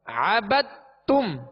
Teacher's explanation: اس کو قلقلہ کر کے الگ سے پھر تا کو پڑھیں گے، ایسا نہیں پڑھیں گے بلکہ دال کو تا میں داخل کر دیں گے